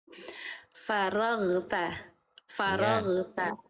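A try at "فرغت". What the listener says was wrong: Nah, itu mantul. Jangan mantul.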